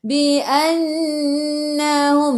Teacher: Bi annahum, nun ada sabdu, tekan ke dalam nun dan dengung dua harakat wajib al-gunnah